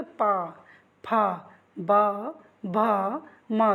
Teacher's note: देखो, बोल के देखो, आपके दोनों ओंठ बंद हो रहे हैं। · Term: ओष्ठ